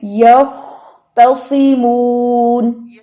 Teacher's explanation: خوا کے حرف پر زبان کی جڑ اٹھائیں، یختصمون. تا کو لمبا مت کریں.